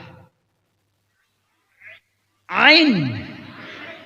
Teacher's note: Nah ini serak. Suara serak itu ain.